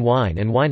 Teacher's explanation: /hw/ and /w/ are being increasingly merged in supraregional Irish English